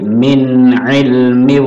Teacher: min jelas, nun sukun bertemu ain, idhar, idhar halki